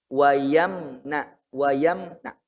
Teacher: Itu mim itu jangan ada pantulan Pak ya.